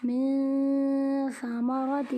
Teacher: نون ساکن کے بعد ثا حروف اخفا میں سے ہے، اسی لیے یہاں پر گنہ کر کے پڑھیں گے، نون کو اخفا کر کے پڑھیں گے